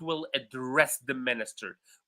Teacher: as a verb, I will address him, or the president will address the minister. We highlight the second syllable.